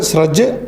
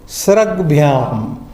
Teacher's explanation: So, Chavarga letter is becoming Kavarga letter. Sometimes within the same Varga change takes, sometimes one Varga letter, third letter of the same Varga, one Varga is replaced by the third letter of the another Varga.